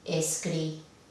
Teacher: vemos que hay mayor intensidad en la última sílaba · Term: palabra aguda